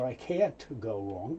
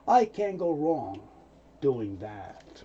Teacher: Often the T sound isn't made.